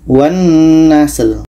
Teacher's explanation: Sin itu salah satu sifatnya adalah hamas, ada berangin.